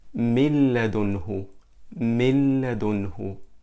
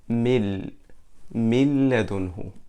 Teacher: we merge a noon sakina into the letter lam al-mutaharrika, and they become just lam mushaddada, and it sounds mil ladunhu. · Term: Al-Idgham